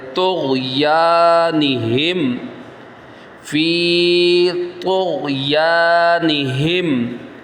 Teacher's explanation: طا کو پر پڑھنا ہے، ہیلدی پڑھنا ہے